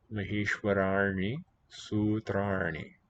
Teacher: because the r's precede in those words, colors the ends into retroflex